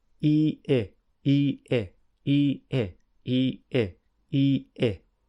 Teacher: Actually, I is slightly lower, so the mouth is slightly more open.